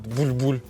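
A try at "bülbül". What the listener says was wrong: Он не булькает. Вот ты так произносишь. Нужно произносить с помощью звука «ю». Бюль-бюль.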